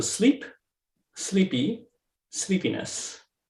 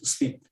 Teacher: itself sleep that the that sleep the duration of that word the sound sleep is much longer when it's a monosyllabic word versus when it's embedded within a trisyllabic word like sleepiness